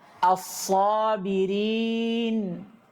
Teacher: maka hendaknya dia nampakkan safirnya, sifat safir yang terdapat pada sad, dan jangan dia lemahkan